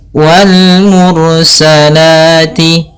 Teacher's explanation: Pada bacaan wal mursalati, di sini ini ada alif lam qamariyah, yaitu alif lam yang ditulis dan dibaca huruf lamnya dengan jelas, yaitu adanya huruf alif lam bertemu dengan mim. Kemudian ro-nya di sini kita baca dengan ro tebal disebabkan karena sebelum huruf ro yang disukunkan ada huruf yang dhammah.